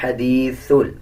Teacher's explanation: سین اور سا میں کوئی فرق نہیں رکھتے. جب سا ادا کیا جاتا ہے تو زبان کی نوک دونوں دانتوں کے درمیان آتی ہے, زبان کی نوک, تب جا کے سا ادا ہوتا ہے.